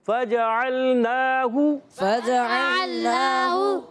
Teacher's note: فا کو نہیں کھینچا، جیم کو نہیں کھینچا، عین کو نہیں کھینچا، پھر ہا کو نہیں کھینچا، صرف نون پر کھڑا زبر تھا، اس کو کھینچا ہے · اب نون پر کھڑا زبر ہے، اس کو ایک الف کھینچ دیں گے، پھر ہا پر پیش ہے، پھر نہیں کھینچیں گے، یعنی کھڑی حرکات آئیں گی تو ایک الف کھینچنا ہے، حرکات آئیں گی تو نہیں کھینچنا۔